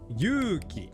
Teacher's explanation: 'yuuki' has three kana, so it has three moras of length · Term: long vowels